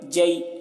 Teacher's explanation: یا ساکن سے پہلے زبر ہے، تو اس کو جلدی پڑھیں گے جئی ایسے۔ اب نیچے دیکھیے خلق، خا زبر خو، تینوں میں زبر ہے تو کھینچیں گے نہیں، تینوں کو نہیں کھینچیں گے۔ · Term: یا لین